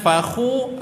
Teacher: fakhu kita muncungkan kerana kha tersebut baris dhammah. Bila baris dhammah sahaja yang kena muncung. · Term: huruf kha